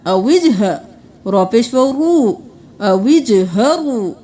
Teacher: واو مدہ ہے ایک الف کے برابر کھینچیں گے۔